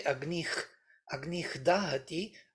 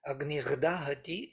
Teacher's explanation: And for Frenchies, Agnir, Dahati is totally natural. So that H becomes a R voiced before voiced. That's it. That's why it was fixed as a R sandhi, Agnir Dahati.